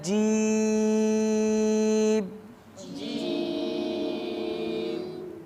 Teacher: یہ زبان کے درمیان اور تالو کے درمیان سے ادا ہوتی ہے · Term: حروف شجریہ